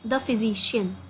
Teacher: there is a stress in the middle on SI